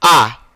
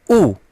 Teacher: ऊ जब बोलते हैं ऊ, ऊ देखिएगा, ऊ बोलते वक्त ही तुरंत हमारा ओठ जो है गोलाकार होता है। ऊ, ये आपका जो चोंच है, आप प्रयोग करिएगा, आपका जो चोंच है ये देखिए गोलाकार हो रहा है। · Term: वृत्त